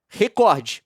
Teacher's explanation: O Ministério Público Federal entrou com uma ação civil pública contra a Globo para exigir que a emissora oriente seus profissionais a pronunciar a palavra recorde como paroxítona, ou seja, recorde, com força na sílaba cor, recorde, e pague indenização por danos morais coletivos.